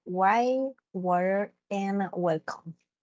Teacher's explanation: the W sound, which is a labiovelar approximant